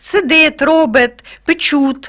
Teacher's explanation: в дієсловах ми любимо твердий Т